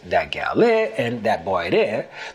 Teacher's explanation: Gullah speakers also drop consonants for vowels where the two words meet.